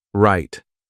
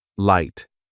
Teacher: Feel your tongue. For right, the tongue curls back and touches nothing. For light, the tongue touches behind your teeth.